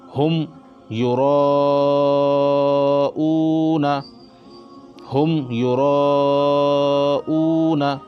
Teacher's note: اس کو جلدی پڑھیں گے بغیر غنہ کے پڑھیں گے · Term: اظہار شفوی